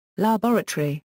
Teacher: rer is pronounced with primary stress on the second syllable while American English stresses the first syllable